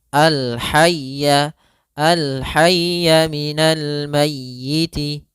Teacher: di sini ada ya tasydid, ditekan ya-nya